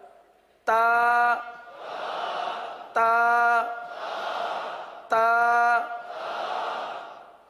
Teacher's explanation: یہ حروف نطعیہ ہیں، زبان کی نوک اور اوپر کے دانتوں کی جڑ سے ادا ہوتے ہیں